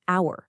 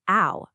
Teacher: In hour, the word starts with H, but the H is totally silent. The first sound you actually hear is ow, a vowel sound.